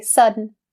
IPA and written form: ˈsʌ-n (sudden)